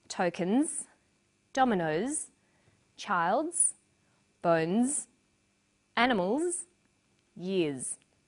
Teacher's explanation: r v v m n and after vowels and dip thongs the final s is pronounced z